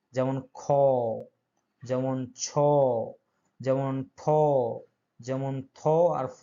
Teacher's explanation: এগুলো উচ্চারণের সময় বাতাসের আধিক্য দেখা যায়, জোর করতে হয় এবং প্রচুর বাতাস বের হয়, এবং এদের শেষে একটি হ জাতীয় শব্দ বের হয়। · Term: মহাপ্রাণ ধ্বনি